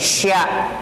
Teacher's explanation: shin itu di tengah lisan, mundur sedikit dari bacaan sin awal